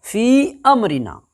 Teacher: एक अलिफ से ज़्यादा पढ़ना है आपको · मद्दे मुनफस्सिल को 2 से ढाई अलिफ के बराबर खींच करके पढ़ेंगे